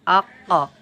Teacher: আলিফ কফ জবর আক তাহলে এই কফটি উচ্চারণ হচ্ছে কোথা থেকে জিহবার গোড়ার অংশ হতে উপরের তালু লাগিয়া উচ্চারণ হয়